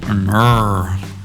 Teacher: Instead of lowering the sides of your tongue, you're pulling the tip of your tongue back, and it's not touching the roof of your mouth